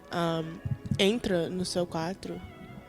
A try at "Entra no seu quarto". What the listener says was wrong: It's the fact that you said quarto like mad weird. I think you just put an R where there wasn't an R.